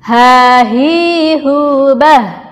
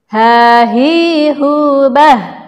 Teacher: huruf h itu keluarnya dari ujung tenggorokan, seperti huruf hamzah atau alif